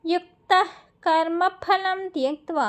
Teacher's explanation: కర్మ ఫలంలో పాని సాంస్క్రిట్లో ఫా అనే పదం ఉండదు, పా అని చదవాలి. 2 పెదాలు బిగబట్టి వదిలితే పా అనే పదం వస్తుంది మనకి